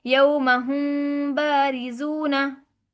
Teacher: मीम साकिन के बाद अगर बा आ जाएगा तो फिर क्या होगा? मीम में गुन्ना के साथ इख्फा होगा, इसे इख्फा शफ़ी कहते हैं, हमने हमें पढ़ चुके हैं, ठीक है।